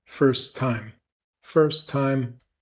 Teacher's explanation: we're going to drop the T in first and release the T on time.